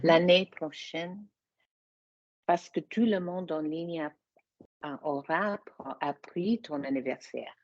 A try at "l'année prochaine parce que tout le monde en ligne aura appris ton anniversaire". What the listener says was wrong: Good. Recevoir. Hold yourself to these standards, people. Good.